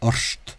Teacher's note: in Scotland, this word orth tends to be pronounced as if there were an S there. Orst.